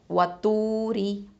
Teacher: இப்போது வாவுல் மத்துங்கிறதுனால 2 ஹரக்கத்தை நீட்டணும். வ தூ, ரா கெஸ்ரா ரி, இது வந்து தர்க்கிக்கு மெல்லினமாக தான் உச்சரிக்கணும்